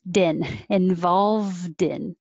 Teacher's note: the involved past tense connects to the in